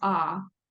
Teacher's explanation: the last vowel is ah that is a low back vowel